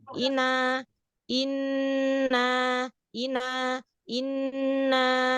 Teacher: Nah, jadi tidak dikejut. Jadi tetap biasa aja kayak kita ngomong ina, tapi ditahan sejenak nunnya.